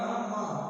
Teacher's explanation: ना का हो गया नासिका दंत और मा का हो गया नासिका ओष्ठ